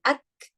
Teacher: The characteristic of shidda comes first, ak, blockage of sound because makhraj is closed, and then followed by flowing of air, which is hums. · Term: kaf